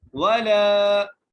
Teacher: لام کو ایک الف کی مقدار کھینچ کے پڑھنا ہے، ولا، ٹھیک ہے جی۔